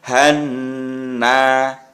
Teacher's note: selain dibaca panjang juga dibaca mendengung hannaf seperti itu jadi ya Han itu namanya mendengung dan agak panjang membacanya